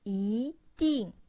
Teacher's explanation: when E is followed by a syllable in the fourth tone, it changes into the second tone.